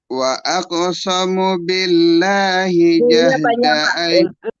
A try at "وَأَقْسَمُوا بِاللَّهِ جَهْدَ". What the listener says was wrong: Wa aqsamu panjang munya.